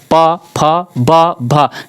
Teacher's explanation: तो प, फ, ब, भ जब बोल रहे हैं तो आपका ओठ आपस में टकरा रहा है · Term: प वर्ग